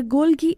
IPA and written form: ˈɡoʊldʒiː (Golgi)